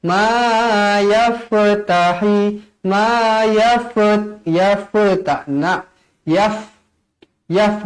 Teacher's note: yaf huruf fa, bukan huruf qalqalah. Jadi jangan lantunkan dia. Ma yaftahi, ma yafat, yaftana, yaf, yaf, matikan terus.